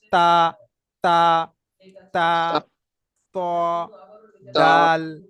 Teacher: দেখেন, এই যে জিভ আছে, জিভটা এই উপরের যে দাঁত আছে ভিতরের ভিতরের অংশই গোড়ার সঙ্গে লাগবে।